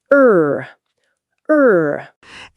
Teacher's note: First, English R. The tongue is pulled back slightly. It doesn't touch the teeth, and the lips are a little rounded.